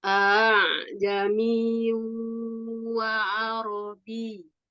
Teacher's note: Ain sendiri kan seharusnya juga nggak boleh masuk hidung ya